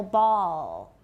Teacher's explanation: so ball is really a very high back vowel ooh it's a very very high back ooh put your tongue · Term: dark L